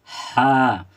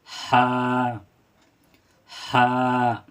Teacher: ये हलक से अदा होती है और थोड़ा खींच कर पढ़ेंगे।